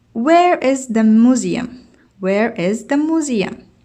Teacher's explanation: The information question with where has falling intonation. والسؤال الذي يخص المعلومات والتي نستخدم فيها where في عندها نزول في الصوت، ليس ارتفاع إنما نزول.